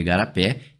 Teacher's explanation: igarapé tá com uma sílaba tônica a última, mais uma palavra oxítona. Só que agora oxítona terminada em e e oxítona terminada em e, sem problema, ela vai ser acentuada.